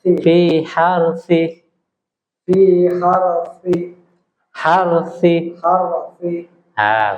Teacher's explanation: huruf rnya jangan berketar terlalu banyak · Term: huruf ro